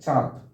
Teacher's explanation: চন্দ্রবিন্দুর উচ্চারণ নাসিক্য, অর্থাৎ যে বর্ণের উপর থাকবে সেই বর্ণটির উচ্চারণটা করার সময় মুখ নাক উভয় দিক দিয়ে বের হবে